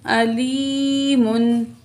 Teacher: حمزہ زبر آ، لام زیر یا لی، یا ساکن ما قبل زیر ہے، یا مد ہے، 2 کاؤنٹ کھینچ کے پڑھیں گے. میم 2 پیش من، علیمن.